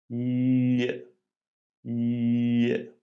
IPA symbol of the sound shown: ʎ